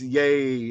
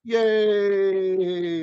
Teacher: instead of ye, it's yay. It got lengthened. You can hear that's longer, right?